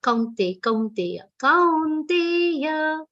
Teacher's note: kau and te both are long sounds. So the aghat on kaun is also very subtle, not kaunte, kaunteya.